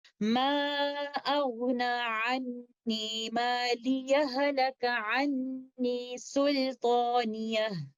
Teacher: تو دونوں آیات کو ملا کر پڑھتے ہوئے ایک آپشن تو یقینی طور پر ادغام کی ہی ہے، جہاں پر ہم ادغام کامل کرتے ہوئے اس کو اس طرح سے پڑھیں گے، ما اغنا عنی مالیہ ہلک عنی سلطانیہ۔ تو ساکن ہا متحرک ہا کے اندر مکمل طور پر مرج ہو جائے گا، یہ ادغام کامل ہوگا۔